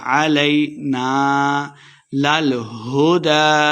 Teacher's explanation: علینا الف مد ہے تو 2 حرکات اس کو لمبا کر کے پڑھیں گے